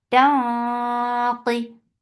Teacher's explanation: This ikhfa is heavy. So lift your tongue up to make this heavy ikhfa. Taqi. Qaf is comparatively light.